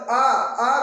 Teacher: आ को जब हम बोलते हैं तो सबसे ज्यादा मुख खुलता है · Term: विवृत